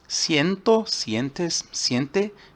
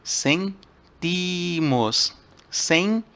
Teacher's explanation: a donde sería una E, se transforma en IE porque está en posición más fuerte, tónica